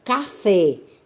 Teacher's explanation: na palavra café, a sílaba forte é fé